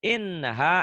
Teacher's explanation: N-nya jangan ditahan. An-nya ditahan, gunnah, tapi A-nya dilepas.